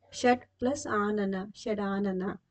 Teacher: ಪದದ ಕೊನೆಯ ಅಕ್ಷರವು ಯಾವಾಗಲೂ ಅರ್ಧ ಅಕ್ಷರವಾಗಿರುತ್ತದೆ ಉದಾಹರಣೆಗೆ ಷಟ್ ಪ್ಲಸ್ ಆನ ಷಡಾನನ ಪೂರ್ವ ಪದದಲ್ಲಿರುವ ಟ ಬದಲಿಗೆ ಡ ವ್ಯಂಜನ ಬಂದಿದೆ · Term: ಜಸ್ತ್ವ ಸಂಧಿ